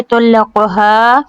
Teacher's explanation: قاف کو لمبا نہیں کرنا، ہا کو لمبا کرنا ہے، الف مد ہے